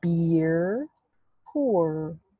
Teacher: for beer you actually make a little snout or a strong lip rounding, and for poor you don't.